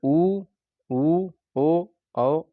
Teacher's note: होठ वृत मुखी या गोलाकार होते हैं